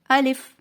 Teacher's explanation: الف منہ کے خالی حصے سے ادا ہوتا ہے، آ کو لمبا نہیں کرنا، لام کو لمبا نہیں کرنا بلکہ جلدی سے ادا کرنا ہے